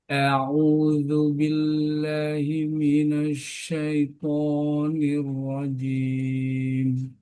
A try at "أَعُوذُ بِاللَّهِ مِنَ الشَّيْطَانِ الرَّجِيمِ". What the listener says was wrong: Shinnya kurang dibuka. nasyai. syaitonir nirrojim nirrojim ah, nirrojim.